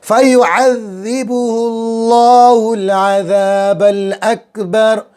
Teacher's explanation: اللہ کے نام سے پہلے والے حرف پر پیش آ گیا، اللہ کے نام پر موٹی آواز منہ بھر کر اللہ کے نام سے پہلے والے حرف کے اوپر پیش ہے.